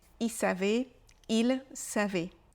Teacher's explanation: le l de il n'est pas prononcé